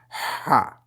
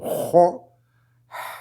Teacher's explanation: Ha, mais pas comme ho. Ha, c'est juste on fait sortir de l'air du fond de la gorge